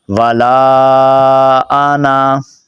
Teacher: اس کے اندر بھی بہت ساری غلطیاں لوگ کرتے ہیں، نون کو یا لمبا کر بیٹھتے ہیں یا بالکل چھوڑ دیتے ہیں، تو آپ نے اس کو درمیانہ پڑھنا ہے